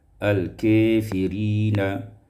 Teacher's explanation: al-kafirina imalatu fathatil kaf wal alif. Diimalahkan fathah kaf dan alif.